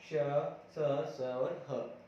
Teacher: तो वो जो संघर्षी किन्हें कहेंगे, किसे कहेंगे कि इन वर्णों के उच्चारण में हमारे मुंह के जो अंग है, हमारे स्वर यंत्र में जो अंग है वह पास पास आ जाते हैं तथा वायु मार्ग संकीर्ण हो जाता है, जिनकी वजह से यह घर्षण के साथ हवा जो है बाहर निकलती है, इन्हें इसलिए संघर्षी कहते हैं।